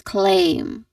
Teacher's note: It ends with a nasal sound. The nasal sound is letter M sound.